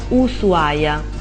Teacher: Non si sente proprio la presenza dell'H.